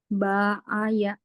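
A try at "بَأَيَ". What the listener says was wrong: Pendek semua. Nah, gitu.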